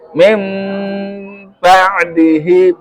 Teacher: dengan mengubah nun menjadi mim